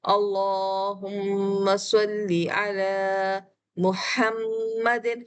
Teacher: ہا درمیانے حلق سے ہوا کے شور کے ساتھ آتا ہے ، پھر میم پر تشدید ہے، آپ کے ہونٹ میش ہو